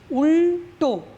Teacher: আবার যখন উল্টো শব্দটি আমরা ব্যবহার করছি, উল্টো লয় হসন্ত, এই ল দেখো মূর্ধায় গিয়ে স্পর্শ করছে, উল্টো দেখো তালু ছেড়ে পেছনে চলে যাচ্ছে, মূর্ধাতে স্পর্শ করছে, তখন হচ্ছে মূর্ধন্য ল।